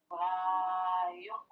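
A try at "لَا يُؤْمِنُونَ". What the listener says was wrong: Masih yuk Ibu bacanya. Ibu masih yuk. Tapi yuk Yu.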